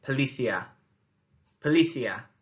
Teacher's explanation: One of them is the accent on the I, and the other one is the fact that the C is actually a th sound as we say it.